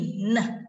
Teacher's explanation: Neh sound itu kan alveolar, lidahnya di belakang gigi atas ya.